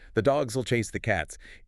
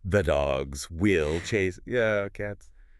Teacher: The and will are unstressed. We just crush them. We say it like the dogs will chase the cats.